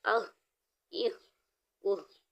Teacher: ہا کی ادائیگی حلق کے نیچے والے حصے سے کریں گے